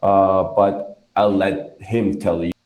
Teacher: Him is the emphasis here.